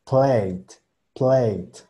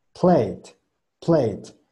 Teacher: Entonces la L es gorda, la T es marcada.